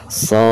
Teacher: Jadi dibacanya di ujung atau setelah kita membaca panjang huruf shad, maka ujung suaranya harus ada pantulan huruf dal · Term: qalqalah